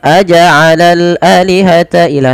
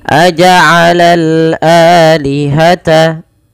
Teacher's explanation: A dipanjangkan 2 harokat karena ia mad badal, adanya hamzah bertemu dengan alif.